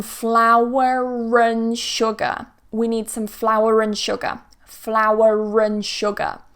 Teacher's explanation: Here I'm focusing on RP, modern RP, where the R isn't pronounced, it's silent. But here, because we've got a vowel coming after, we're going to join them together with a r.